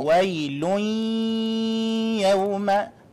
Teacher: it is idgham with ghunnah. We hold it for 2 seconds.